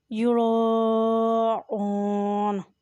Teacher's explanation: ہم یراؤن، را کے ساتھ الف ہے اور اس پر بڑی مد ہے، یہ مد ہے، اس لیے اسے 2 الف کی مقدار پڑھیں، یعنی خوب اچھی طرح کھینچ کر ادا کریں۔ ہم یراؤن، حمزہ کے اوپر پیش ہے اور ساتھ واو ہے، یہ بھی مد ہوگا